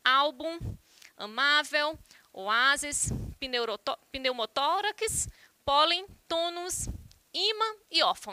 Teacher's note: São alguns exemplos de palavras paroxítonas, onde a sílaba tônica é a penúltima.